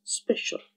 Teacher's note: the sound S coming accompanied by the sound Y, and suddenly we find that it also assimilates to give a new sound, Sh. So observe the word special, where the sound S is placed adjacently to the sound Y, and it is not special anymore, it's special.